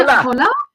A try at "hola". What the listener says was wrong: No, hola. H is silent.